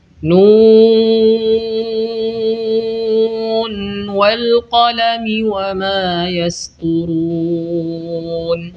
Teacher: pada kata Nun terdapat nun sukun yang kita baca jelas meskipun bertemu dengan huruf w pada kata setelahnya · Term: izhar riwayah